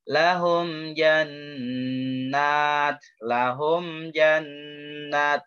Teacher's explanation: mimnya jelas ya, mimnya jelas, izhar syafawi. Itu harus didengungkan, ada nun bertasydid, gunnah, nun bertasydid.